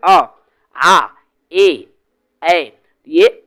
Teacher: अवृत्त मुखी जिस उच्चारण में होठों की स्थिति गोलाकार नहीं होती।